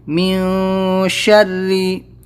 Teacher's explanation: یہاں پر نون ساکن اس کے بعد میں شین اخفا لیٹر ہے، اس لیے یہاں پر ہم اخفا کریں گے ، مین شری، بارا زبر بر، را زیر ری، بر ری،